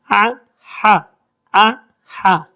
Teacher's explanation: عین اور ہا کا مخرج بھی ایک ہے، حلق کے بیچ سے